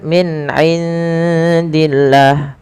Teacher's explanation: pada lafal nun sukun bertemu ain, jelaskan huruf nunnya karena dia ada bacaan izhar